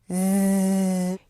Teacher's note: For the Z, you'll feel a lot of vibrations. That's a signal that your vocal cords are vibrating.